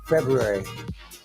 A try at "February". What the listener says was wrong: February. It's February. You got an accent. have an accent. I think you have because you said that you're from LA, right? So and then you just went back to Minnesota.